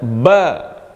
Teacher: Ketika kita melafalkan ba, tidak ada embusan nafas di sini. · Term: jahr